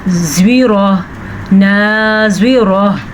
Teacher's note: زواد کو پر پڑھنا ہے کیونکہ زواد جو ہے حروف مستعلیہ میں شامل ہے۔ را کو پر پڑھنا ہے کیونکہ را کے اوپر زبر ہے۔